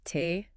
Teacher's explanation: similar to English but again aim for a slightly softer less aspirated T sound